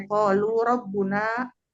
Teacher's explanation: Qalu ro dibaca tebal tafkin karena berharokat fathah